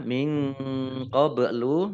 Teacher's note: Ba sukun qalqalah dibaca memantul